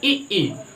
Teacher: ई करेंगे तो हमारा जो तालु है ये ज्यादा सक्रिय है